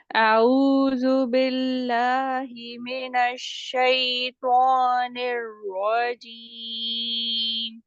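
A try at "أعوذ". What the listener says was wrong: اعوذ نہیں، اعوذ، عین کو واضح کریے. ہونٹوں کو گول کریے، ضمہ ہے نا عین کے اوپر، پیش ہے، اس کے لیے آپ کو ہونٹوں کو گول کرنا پڑے گا.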